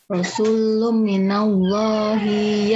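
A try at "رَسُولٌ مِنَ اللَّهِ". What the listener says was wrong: Oke, diulang Bu coba rasulumnya. Lumnya berapa harokat Bu? Lum. Nih, rasulum ditahannya berapa harokat Bu? 3 ya. Jadi nggak usah buru-buru Bu ya.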